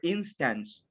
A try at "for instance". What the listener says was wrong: It's not an e, like instance. It's for instance.